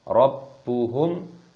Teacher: hukumnya dibaca idzhar syafawi dibaca jelas jangan didengungkan